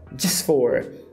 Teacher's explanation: A pronúncia deveria ser just. Só que me parece que ele desvozeia. Esse j vira tch. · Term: desvozeamento